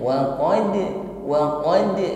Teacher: Namun bedanya ketika huruf dal sukun, pantulan yang keluar ini pantulannya ringan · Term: qalqalah sughra